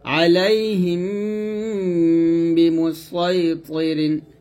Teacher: দুই ঠোঁট মিলাইয়া আমরা গুণনাটা এখানে আদায় করবো, এক লিপ পরিমাণ টান দিব।